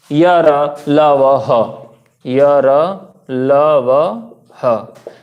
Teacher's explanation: तो सघोष व्यंजनों की श्रेणी में य र ल व ह आएगा